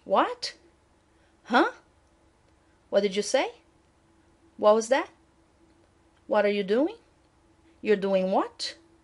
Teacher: so your voice goes up at the end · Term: repetition questions